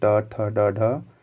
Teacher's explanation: इसका उच्चारण अगर देखा जाए तो ये भी मूर्धा के स्पर्श से ये होते हैं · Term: मूर्धन्य व्यंजन